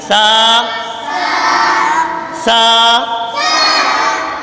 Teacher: سا، سا کو پڑھتے ہوئے خیال رکھیں سیٹی کی آواز بالکل بھی نہ نکالیں۔ سا سا، سا کا مخرج زبان کا سرا اور اوپر کے دانتوں کے اندرونی کنارے سے سا ادا ہوتا ہے